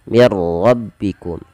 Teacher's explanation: nunnya tidak dibaca lagi langsung masuk ke huruf ro dan ini kita hukumi dengan bacaan Idam bilaunah Gham tadi memasukkan · Ra-nya di sini kita namakan dengan ra tafkhim karena ra tebal. Dia ra yang berharakat tasydid dan berharakat fathah. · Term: idgham bila gunnah